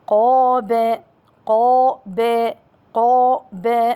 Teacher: القاف حرف مفخم من حروف التفخيم خص ضغط قذ مخرجه اللسان أي من أقصى اللسان مع ما يحاذيه من الحنك الأعلى يعني المنطقة الرخوة.